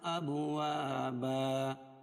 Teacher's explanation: اب با پر قلقلہ کیونکہ حروف با حروف قلقلہ میں سے ہے